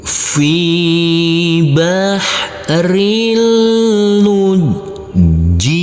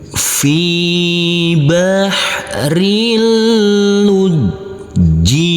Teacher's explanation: huruf lam kita tekan, kita tahan saja dengan 2 harokat. Huruf jim juga kita tekan dan kita tahan dengan 2 harokat.